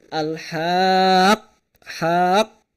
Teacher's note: langsung dimatikan pada qofnya e qoh langsung dimatikan di tanya juga yang jadi ha damir